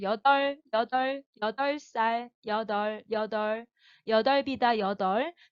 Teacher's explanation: 이 여덟 부분 비읍으로 발음 안 나오고 리을로 나잖아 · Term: 리을, 비읍의 대표음